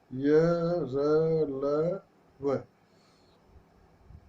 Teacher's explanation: इनके उच्चारण में वायु का अवरोध बहुत कम समय के लिए होता है। जिन व्यंजनों के उच्चारण में जीभ मुख के किसी भी भाग को पूरी तरह स्पर्श नहीं करती, वे अंतस्थ व्यंजन कहलाते हैं।